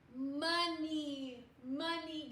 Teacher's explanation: We have another schwa O. The O's gonna go lazy.